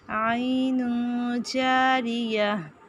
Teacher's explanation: فیہا پہلے دیکھ چکے. عین اخفا ہوگا، تنوین کے بعد جیم ہے